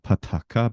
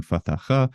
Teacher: you have the changes of the fricatives of pataka becoming fatacha